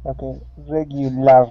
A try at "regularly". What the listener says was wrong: Okay, now, with that AR here at the end of the word, we aren't going to pronounce that LAR, okay? We want to pronounce an ER sound, regularly. And our stress is at the very beginning of the word, regularly.